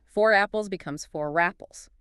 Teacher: next to enough, which starts with a vowel, the tongue lifts to create the bridge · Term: aerodynamic bridge